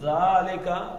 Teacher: زبان کا اگلا حصہ دانتوں کے ساتھ لگانا ہے، ذالک، اور کوئی سیٹی نہیں ہے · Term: زال